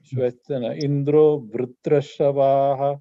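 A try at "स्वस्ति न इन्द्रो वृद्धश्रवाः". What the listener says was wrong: No, Bruddha, Bruddha, Bruddha. There's no Ra, there's no Bruddha, Bruddha, Bruddha.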